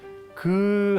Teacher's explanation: 기역은 우리가 이제 어금니 소리 그 할 때 나는 소리입니다